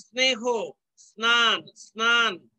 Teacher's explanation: দন্ত স এর উচ্চারণ পাওয়া যাচ্ছে দন্ত নয়ের সাথে যুক্ত হওয়ার কারণে